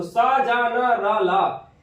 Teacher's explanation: ये 5 वर्ण वर्त यानी कि मसूड़े से बोले जाते हैं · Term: वर्त ध्वनिया